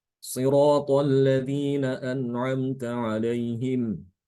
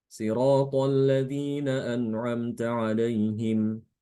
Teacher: Shad itu dibaca tebal dan sin itu dibaca tipis.